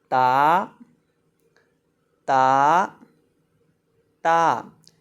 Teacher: تا کی ادائیگی ہوتی ہے زبان کی نوک سامنے والے اوپر کے دو دانتوں کی جڑ سے جب لگتی ہے تو تا ادا ہوتا ہے۔